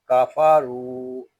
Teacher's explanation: یہاں را کو ہم پر پڑھیں گے اور را کو ہم ایک الف تک کھینچ کر بھی پڑھیں گے